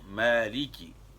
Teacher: میم کو کھینچنا ہے، الف مدہ کرنا ہے